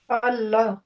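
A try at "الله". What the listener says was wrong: আচ্ছা, এই যে হটা আরো ভিতর থেকে আসবে, মানে অ্যাজ ইফ হ্যাঁ বুকের ভিতরে একটা সাউন্ড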